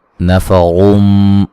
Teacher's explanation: रा को मोटा अदा करेंगे